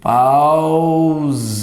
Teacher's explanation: sai o a e sai o u na mesma emissão. Não divido. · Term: ditongo